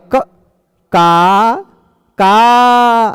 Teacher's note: आप कहेंगे क, का ऐसा बोलेंगे तो वो आप क नहीं बोल रहे हैं, वो क के पिछवा जो अ है उसी को बोल रहे हैं। आ ही सुनाई पड़ रहा है, क तो उतना देर तक सुनाई नहीं पड़ेगा